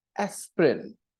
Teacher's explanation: the first vowel sound is stressed more and you hear aspirin